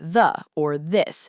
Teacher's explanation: For the voiced th, your vocal cords are vibrating while you push air through the gap.